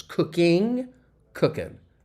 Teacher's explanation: you hear that ing sound often with American English that we drop that G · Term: g-dropping